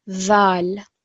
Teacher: it's similar to where the tongue is placed for the letter tha, but there's more of a sort of buzzing sound, more of a vibration, dhal. So tha and dhal.